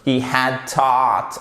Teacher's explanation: c'est pas un A à la française, hein, c'est entre le A et le O